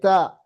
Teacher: Tempatnya ujung lidah ke gigi seri atas. Pangkal gigi seri atas. Ta dia sifat yang pertama hames.